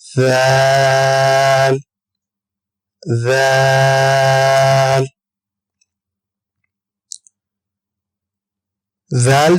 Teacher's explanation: ذال جو ہے زبان کا سرا اور اوپر کے دانتوں کے اندرونی کنارے سے ہم ذال کو ادا کریں گے